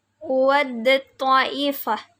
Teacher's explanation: Karena huruf tak mati, tak sukun bertemu dengan ta yang makhrajnya ini sama tetapi sifatnya berbeda. Jadi membacanya tidak di ta yang sukunnya tetapi disambungkan ke huruf selanjutnya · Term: idgham mutajanisain